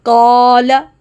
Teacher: اب دیکھیں مثال نمبر 1، قال، قاف باری ہے تو الف کی آواز بھی باری ہوگی۔ قاف حروف مستعلیہ میں سے ہے، اس لیے الف کی آواز بھی موٹی نکلے گی۔ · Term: موٹا